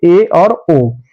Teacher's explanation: जिन स्वरों के उच्चारण में मुख आधा बंद रहता है उसे समृत अर्ध समृत स्वर कहते हैं जैसे ए और ओ